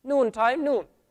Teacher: So, noon, we said the noon is, the tip of the tongue is touching the hard palate. The tip of the tongue is touching the hard palate, so it's behind the roots of the upper teeth.